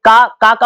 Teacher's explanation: का उच्चारण करने से आवाज कंठ और जीभ से आ रही है